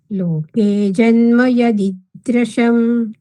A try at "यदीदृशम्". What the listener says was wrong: द्र નથી દ્રુ છે દ્રુ